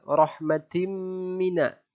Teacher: Alasannya adalah karena huruf mim bertanda tasydid. Huruf mim bertanda tasydid, maka cara membacanya dibaca dengung sepanjang 2 harokat. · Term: gunnah musyaddah